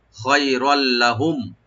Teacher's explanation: রার উপর যে তানবিন আছে, তানবিন উপর যে লাম আসছে এদগামের অক্ষর, এটা আমরা এদগাম করব কিন্তু গুন্না হবে না, এদগাম উইদাউট গুন্না আমরা এদগাম করব, সংযোগ করব লামের সাথে।